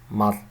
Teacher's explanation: This is a lateral fricative pronounced like th.